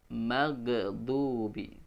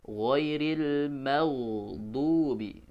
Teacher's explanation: Huruf ghain hurufnya mengalir ya. Jadi nggak boleh tertahan mengucapkan huruf ghain, sehingga kalau tertahan ketika sukun dia bisa berpotensi memantul suaranya ya. Contohnya tadi ghairil itu dialirkan suaranya, jangan ditahan.